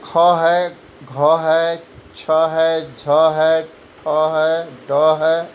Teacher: दूसरे, चौथे वर्ण के उच्चारण में हवा ज़्यादा निकलती है